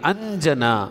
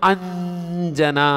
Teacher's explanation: ಎದುರಿಗೆ ಜ ಇದೆ, ಜದ ಅನುನಾಸಿಕ ಅಕ್ಷರ ಜ್ಞ, ಅಂಜನ ಆಗುತ್ತೆ.